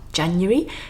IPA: ˈdʒænjəri